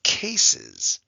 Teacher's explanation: the first s is really an s and the second s sounds like a z